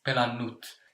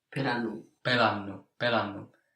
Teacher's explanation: In the spoken language, you can hear the T dropping. So the T doesn't have any importance in these versions after have.